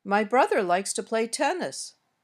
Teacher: The Melody of this sentence my brother likes to play tennis my voice went up a little on brother then back down and up on tennis and finally down at the end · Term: intonation